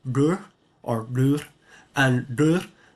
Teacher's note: For hand here, this is the retroflex dur, or dur, and dur, because the r is retroflex, it's apical, and so in this case it is also retroflex, so it harmonizes to be apical.